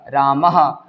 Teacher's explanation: विसर्ग बोलते हैं लेकिन उच्चारण क्या होता है इसका उच्चारण हो से होता है